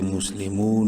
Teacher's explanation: واو مدہ ہے، میم کو ایک الف برابر لمبا کریں گے. مسلمون، نون زبر نا، مسلمون، وقفاً مسلمون.